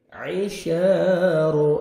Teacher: عین کو اپنے صحیح مخرج سے ادا کریں گے، اے نہیں پڑھیں گے، حمزہ میں ساؤنڈ مکس نہیں ہونا چاہیے